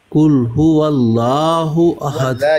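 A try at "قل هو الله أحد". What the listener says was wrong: یہ فلیٹ ہو جاتا ہے. هو اللہ مفخم، هو اللہ مفخم منہ بھر کے. احد دال ساکن، هو اللہ. اچھا لفظ اللہ کو مفخم پڑھنا ہے. اللہ، اللہ.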